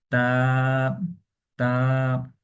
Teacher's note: তাহলে এটি আমরা উচ্চারণ যখন করব, আমরা যে আমাদের দাঁতের যে মাড়ি রয়েছে সেখানে আমাদের জিহ্বাটা লাগিয়ে দেন আমরা এই হরফটাকে পড়বো